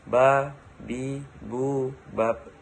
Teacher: Melafalkan huruf ba caranya dengan merapatkan dua bibir kita. · Ketika huruf ba dalam posisi mati, suaranya terdengar mantul.